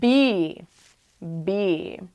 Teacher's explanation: B, where we do use our voice, but we do not blow our breath out of our lips when we make the sound